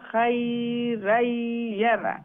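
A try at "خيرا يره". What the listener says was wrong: খাই লম্বা করবা না,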